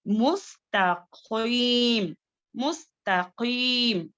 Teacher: ता जो है बारीक पढ़े जाने वाले हुर्फों में से है। अब यहाँ पर ता को बारीक पढ़कर, खौफ को जो है मोटा पढ़कर अदा करना है।